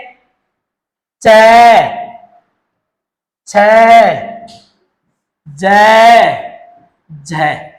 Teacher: पहले तो जिन व्यंजनों का उच्चारण करेंगे लंबे समय तक तो क्या रहेगा? स्पर्श। और अंतिम ध्वनि में क्या होगा? संघर्ष। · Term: स्पर्श संघर्षी